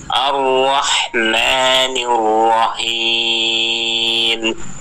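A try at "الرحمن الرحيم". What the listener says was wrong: Ya, kurang konsisten. Ketika Ar-Rahman itu bagus, tapi ketika Ar-Rahim haknya hilang. Huruf H-nya itu jadi H. Ar-Rahmanir Rahim.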